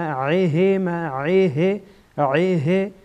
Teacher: عین از وسط حلق